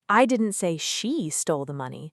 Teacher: Stressing she means someone stole it, but not her specifically.